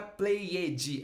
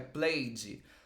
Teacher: esse ed, a gente não pronuncia o E. A gente vai direto pro D e um D bem levinho. Não é played, é played.